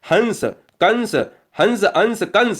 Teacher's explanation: अनुस्वार का उच्चारण नाक से किया जाता है।